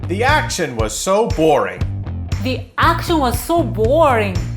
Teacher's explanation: We can put a stress on so and stretch out the word